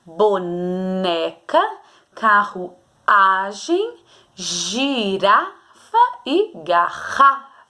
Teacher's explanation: vocês gritaram a penúltima sílaba que são as paroxítonas